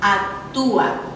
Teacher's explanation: La otra es la, tenemos la U y la A. En este caso, la U, que es la cerrada, está acentuada. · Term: hiato